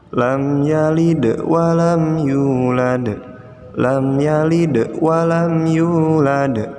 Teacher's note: ayat ketiga kita mendapati ada dua bacaan Qalqalah dalamnya dua-duanya dibaca dipantulkan ya